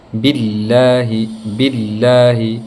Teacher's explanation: جب لفظ اللہ سے پہلے والے حرف کے نیچے کسرہ یعنی زیر آ جائے تو اس وقت ہم لفظ اللہ کو ایک دم باریک اور لائٹ پڑھیں گے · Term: ترقیق